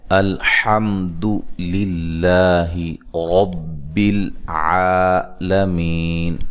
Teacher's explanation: یہ حمزہ کو تحقیق سے پڑھنا ہے، نرم ادا نہیں کرنا، لام کو ہلانا نہیں ہے، یہ حروف قلقلہ میں سے نہیں ہے، اور حا کو واضح نکالنا ہے، الحمد کہنا ہے، الحمد نہیں کہنا، ٹھیک ہے، الحمد نہیں، الحمد۔